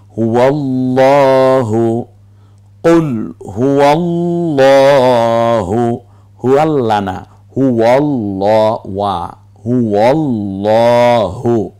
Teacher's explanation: এই হটা ছেড়ে দিয়ে হুয়াল্লাহু কণ্ঠনালীতে ছেড়ে দিয়ে উচ্চারণ করতে হয়